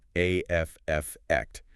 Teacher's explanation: it's often pronounced with the stress on the first syllable